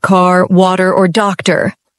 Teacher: American English is rodic, which means we punch that R sound even at the end of words